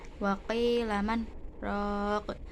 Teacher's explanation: Sakta yaitu berhenti sejenak sekedar satu alif tanpa bernafas